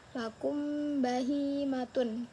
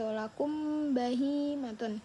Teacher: Jadi mim dan ba ini kayak didengungin gitu. · Nah, selain ikhfa hakiki di ikhfa ini ada ikhfa syafawi yang artinya menyembunyikan atau menyamarkan huruf huruf mim ketika bertemu dengan huruf ba dan didengungkan. Contohnya ada lakum bahimatun.